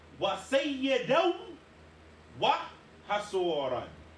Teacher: the n sound in sayyidan, we drop that. We have to combine it with the waw in wa hasuran.